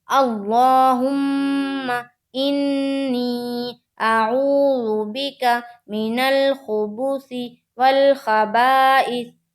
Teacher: انی میں بھی نون کے اوپر تشدید ہے، تو میم اور نون کے اوپر جب تشدید ہو تو یہاں پر تھوڑی دیر آواز کو ناک میں روکیں گے